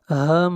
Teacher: میم کے اوپر شد ہے، غنہ ہوگا، آواز ناک میں جائے گی۔